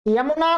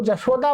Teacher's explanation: अतः यदि यकार का उच्चारण धमात दोष युक्त से किया जाए तो ईशत स्पृष्ट प्रयत्न स्पृष्ट प्रयत्न में परिणत हो जाता है और यकार का जकार में बदल जाएगा।